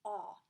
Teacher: my jaw is dropped everything is relaxed and then i've got this aw in the back